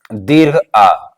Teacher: विभ्रत स्वर कौन होता है विवत स्वर हमारा एक होता है जिसका उच्चारण करने में मुख पूरी तरीके से खुलता है